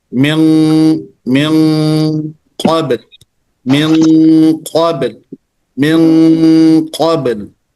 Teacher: nunnya ikut kepada ketebalan huruf qaf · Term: ikhfa